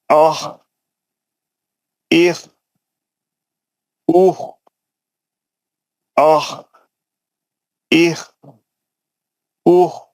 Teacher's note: اور پریکٹس جی پڑھتے وقت میں پورا خیال رہنا میرا آواز اوپر کے حلق سے نکل رہا، اور موٹا پڑھ رہا ہوں میں، اور میں کھردرا پڑھ رہا ہوں